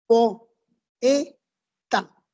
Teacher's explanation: Ya, cuando yo digo po-e-ta, allí hay un yato, no hay un diptongo, porque las dos vocales se pronuncian separadas